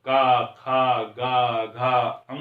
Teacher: आप जब का खा गा घा अंगा बोलते हैं तो कहीं ना कहीं हमारा जो कंठ है, हमें महसूस होता है कि आवाज जो है वो कंठ से आ रही है, इसलिए इसको हम क्या कह देंगे, कंठ कह देंगे, कंठ वर्ण बोल देंगे।